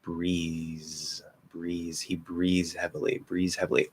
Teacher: a voiced th to z because that's what it is it's a z sound at the end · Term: drop the voiced TH